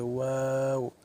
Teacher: সামান্য খোলা রেখে এবং দুই ঠোঁট গোল করতে হবে, গোল করে ওয়াও উচ্চারণ করতে হবে, ওয়াও।